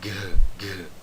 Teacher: era pronunciado mais ou menos como um G aspirado, um G que soltava um pouquinho mais de ar.